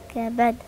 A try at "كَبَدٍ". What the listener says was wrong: هزي الحرف، قلقلة يعني بحركه.